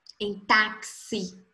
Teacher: Porque os sons X são 2 sons, é o som do K e o som do S.